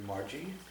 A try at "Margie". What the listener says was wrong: Well, it's a hard G. It's a hard G.